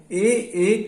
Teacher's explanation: कंठ से और तालु से हम बोलते हैं ए कहे कंठ तालु, इनका उच्चारण हम कंठ और तालु से करते हैं।